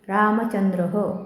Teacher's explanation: विसर्ग नेहमी स्वरानंतर येतो आणि पंक्तीच्या शेवटी येणाऱ्या विसर्गाचे उच्चारण ह सारखे केले जाते. स्वरानुसार ते विसर्ग ह, हु, हे मध्ये परावर्तित होतात.